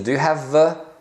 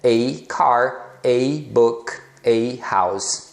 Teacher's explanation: E é um a bem suave é reduzido mesmo porque a fala rápida